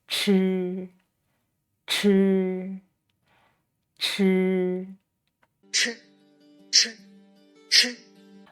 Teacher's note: When pronounce this sound, we also need to turn up the tip of tongue against the hard palate. That means to roll your tongue and then loosen it a bit, and by this time force the air out, and the sound is aspirated, just as in the English word church.